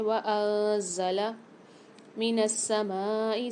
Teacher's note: سین کو ہم سیٹی کے ساتھ پڑھیں گے اور سختی اور جماؤ کے ساتھ بھی پڑھیں گے کیونکہ مشدد آ رہی ہے۔ اس کے بعد دیکھیے مد آ رہا ہے بڑا والا تو یہاں پر ہم 6 الف مدار کھینچ کے پڑھیں گے۔